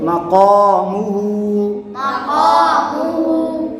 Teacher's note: مقام ہا الٹا پیش ہو ہا الٹا پیش ہو مقامہ مقامہ قاف حرف مصالیہ ہے، حرف مصالیہ کو ہمیشہ یعنی موٹا پڑھتے ہیں